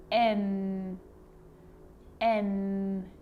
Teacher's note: my tongue is lifting to the roof of my mouth, behind my teeth